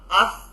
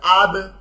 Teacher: ঠিক তেমনি এখানে দেখেন, আফ, কোনো কলকলা নাই, ধাক্কা নাই, জাস্ট আফ, থেমে যাচ্ছে।